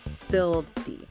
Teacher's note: the past tense and past participle of the verb spill is typically spilled, ending with that soft voiced D sound